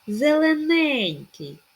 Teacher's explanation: наголос на третю е перші дві залишились ненаголошеними